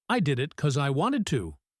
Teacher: Notice the word because. It is a function word, a connector, so it often gets weak or shortened. We might say because with a schwah or just cause.